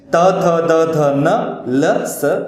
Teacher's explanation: जीभ जब दांत को स्पर्श करती है तब ये इन वर्णों का उच्चारण होता है, या इन वर्णों का उच्चारण करते समय हमारी जीभ दांत को स्पर्श करती है, उनको कहते हैं दंत्यः।